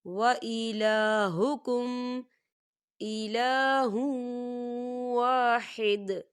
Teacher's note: لام کے پر کھڑی حرکات ہے، تو ہم اسے 2 حرکت کی برابر کھینچیں گے